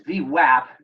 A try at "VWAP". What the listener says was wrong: A in it, not an O. All these East Coast people pronounce it with an O.